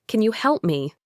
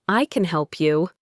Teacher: The can is stressed and clear. But if I say, I can help you, the can is unstressed and sounds like I can help you.